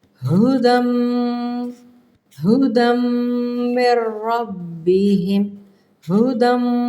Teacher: اب یہ دیکھیں میم ہے، یہ درمیان میں آ رہا ہے تشدید، ہدم، ہدم من ربہم، ہدم، میم کے اوپر غنے کا اظہار کیا ہے، تھوڑی سی بھن بھناہٹ ہوئی ہے